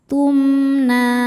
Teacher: Na hukumnya mad thobi'i muqaddar. Karena ada baris fathah panjang di huruf nun. Cara bacanya panjang dua harakat.